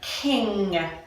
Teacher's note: the ng is the sound of the mid tongue hitting the middle of the palate